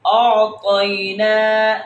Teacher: یہاں پر طا ہے، اس کو پر پڑھیں گے، یہ تا نہیں کرنا